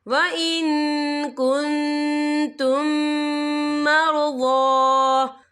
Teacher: یا دیکھیں وَإِن كُنتُم، یہاں میم ساکن ہے، میم ساکن کے بعد جو ہے میم مشدد والا حروف آ رہا ہے، تو یہاں پر ادغام شفوی ہوگا۔ ہم پچھلے میم کو اگلے میم میں مدغم کریں گے اور ہم یہاں غنہ بھی کریں گے۔